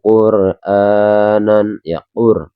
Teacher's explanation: ro ini dinamakan ro tafhim teman-teman ya, tebal